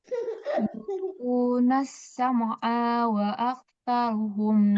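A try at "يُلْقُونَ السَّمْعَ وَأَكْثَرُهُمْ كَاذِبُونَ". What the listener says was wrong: Ainnya jangan dipanjangin. Jangan panjang A-nya.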